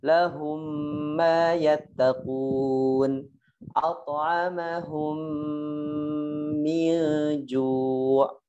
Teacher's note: Cara bacanya dirapatkan bibirnya, kemudian ditahan di hidung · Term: idgham mimi